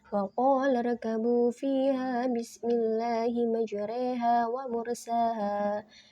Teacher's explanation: Imalah artinya belok atau dalam istilah qiraatnya berarti menyembunyikan fathah ke arah kasroh sehingga bunyinya menjadi e